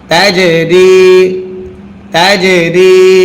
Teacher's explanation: তা জিম জবর তাজ, জিমে যদি সাকিন হয় কলকলা করতে হয়।